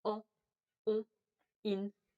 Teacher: the soft palate lowers, allowing air to pass through the nose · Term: nasal sounds